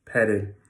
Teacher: the second e in petted is always reduced